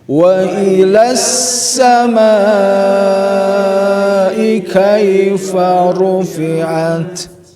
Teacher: Kasih mad wajib muttasil, mad kasih panjang dengan 4 ketukan cukup saja